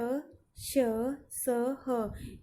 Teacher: इनको जब हम उच्चारण करते हैं तो हवा ज़्यादा मात्रा में बाहर निकलती है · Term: महाप्राण